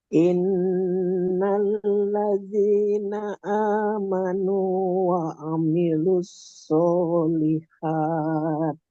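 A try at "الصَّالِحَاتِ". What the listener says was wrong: Tajamkan haknya ini coba. Solihat. Tengah tenggorokan. Lihat.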